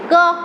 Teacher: पहले तो वायु मेरे मुख में थोड़ी देर रुकेगी, फिर झटके से बाहर आएगी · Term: स्पर्श